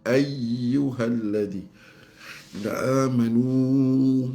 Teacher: mad munfasil mad jaiz empat harakat